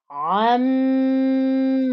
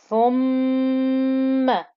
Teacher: So with a noon and a meme, you get this special humming noise called a ghunna. It comes out through your nose, as if you're sort of talking through your nose, and you hold it for a rhythmical count of 2.